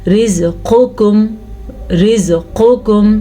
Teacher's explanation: ایک موٹا قاف ایک باریک قاف، دونوں کو موٹا پڑھنا بھی ٹھیک نہیں ہے اور دونوں کو باریک پڑھنا بھی ٹھیک نہیں ہے